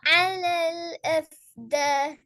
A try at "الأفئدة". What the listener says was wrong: எஃப் இத அஃப்த இல்ல. பாத்தீங்களா பாத்தீங்களா, இன்னொரு சின்ன மிஸ்டேக் கொண்டிருக்கிற. அது உங்களோட மிஸ்டேக்னு சொல்றதை விட இந்த ஃபோனோட மிஸ்டேக் தான் அது. இந்தாக்கி எஃப் இத என்று தான் வரணுமா?